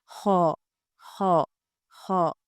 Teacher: इसको हमने गोल अ आवाज के साथ पढ़ना है। राउंड आवाज इसकी होगी। इसका राउंड साउंड होगा ख जहां पे भी इसको पढ़ा जाएगा इसको मोटा ही पढ़ा जाएगा।